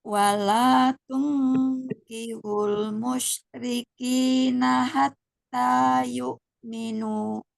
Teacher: Ini kayak salah mau berhenti tuh musyrikin. Nah, kepanjangan itu kinya ya. Dua aja.